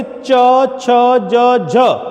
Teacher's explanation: च छ ज झ के उच्चारण में हमारी जिह्वा जब इनका उच्चारण करती है तो अपेक्षाकृत अधिक घर्षण करना पड़ता है। अपेक्षाकृत जिह्वा को तालु के साथ अधिक संघर्ष करना पड़ता है, इसलिए इसे स्पर्श संघर्षी व्यंजन कहा जाता है।